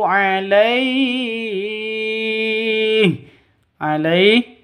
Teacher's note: alaih panjang boleh dua boleh empat boleh enam ketukan karena mad layyin atau mad lin